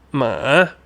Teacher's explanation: we start at the bottom. Rising. We go up.